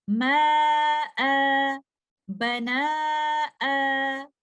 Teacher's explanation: فتحتین کی صورت میں ہم مد العوض کے ساتھ سٹاپ کرتے ہیں ، جہاں پر ہم فتحتین کو ایک فتحہ میں بدل کر